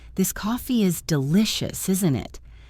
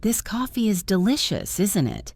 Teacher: If your voice goes down at the end, you are stating a fact and just checking. If your voice goes up, you are genuinely asking a question. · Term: downward intonation